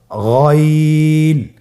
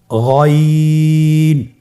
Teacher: গইন হরফটি উচ্চারিত হয় কণ্ঠনালীর শেষ ভাগ হতে। এখান থেকে উচ্চারণ করুন গইন।